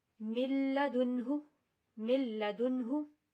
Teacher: ہم نے میم نون لام ہم نے ان کو آپس میں ملا دیا ہے, ادغام کیا ہے لیکن غنہ نہیں کیا